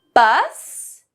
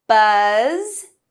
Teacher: Bus with the unvoiced S and buzz, buzz with the voiced Z